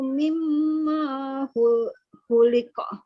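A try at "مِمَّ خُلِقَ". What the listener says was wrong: Mimma khuliqa. Dimanya jangan dipanjangin. Mimma khuliqa.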